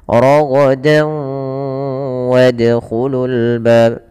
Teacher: Kalau huruf setelahnya waw, maka masukkan tanwinnya ke waw dan ditahan dan dibunyikan dengan huruf waw. Suara nunnya hilang. Raghadan menjadi ragadaw. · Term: idgham bi gunnah